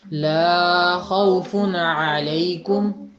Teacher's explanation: لا کی آواز تھوڑی سی لمبی کر دی آپ نے، 1.5 گنا تقریباً۔